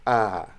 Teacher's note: Skapa is open, front unrounded.